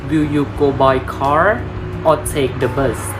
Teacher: his voice lies slightly in the middle and falls at the end for the final option